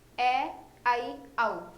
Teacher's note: ठीक है, ए आई औ, इसमें आ जाएगा अर्धविवृत में। अर्धविवृत का मतलब मुख द्वार थोड़ा सा खुला रह जाता है इसमें